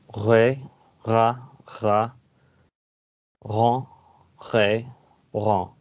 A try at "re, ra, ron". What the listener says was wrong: You have an exemplary R. Well done, but you don't need to do it as much.